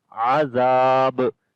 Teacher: Ain we read from the middle of the throat. Zal we read soft sound and also we long. · And on the ba we make qalqala.